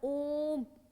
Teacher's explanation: ओम में ज्यादा टाइम लगता है हमारे को, ह्रस्व दीर्घ से भी ज्यादा टाइम लगता है